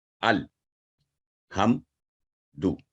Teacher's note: इसके अलावा जब अलिफ हमदा जो साकिन है और आइन पर जब सुकून की अलामत हो, इसमें भी मुख्तलिफ उसकी अदायगी होती है। तो आगे है साकिन लाम को मजबूती के साथ बगैर हलाए 1 सेकंड तक पढ़ना